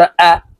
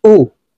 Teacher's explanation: তাড়াতাড়ি করে শক্তভাবে হামজার উচ্চারণ করব